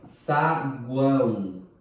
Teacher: Depois nós temos saguão, que é um tritongo nasal